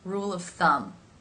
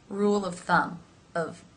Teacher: Here it is the schwa sound, rule of thumb. That sound happens very quickly. Rule of thumb, as the word of is not an important word in this phrase.